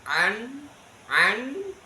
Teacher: Nunnya enggak boleh dibaca mendengung atau bengengeng. Tapi harus jelas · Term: izhar halqi